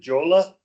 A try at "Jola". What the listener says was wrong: It's Yola, so it's the J is silenced silent J, pronounced Yola.